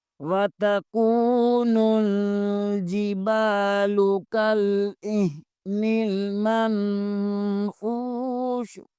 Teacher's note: لکھا تو منفوشی ہے لیکن وقف کی صورت میں ہم منفوش پڑھیں گے